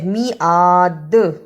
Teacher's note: رکنے کی صورت میں دا پر بھی قلقلہ کرنا ہے